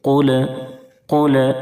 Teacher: قاف کو موٹا پڑھیں گے، پر کر کے پڑھیں گے، کیونکہ قاف حروف مستعلیہ کے 7 حرفوں میں سے ہے، اور لام کی ادائیگی میں آواز بالکل نہ لوٹے، اس کا خیال رکھیں گے۔